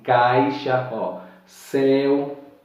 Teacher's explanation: Veja que são mais fortes e abertos, ele sai mais pelas cordas vocais e não pela parte do nariz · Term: ditongos orais